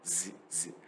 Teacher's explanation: 웃으면서 Z 벌이 이렇게 막 브즈 위아래로 막 이가 닿을락 말락하면서 여기가 얼굴이 약간 울려야 돼요. Z 이렇게 웃으면서 웃기만 하면 돼요.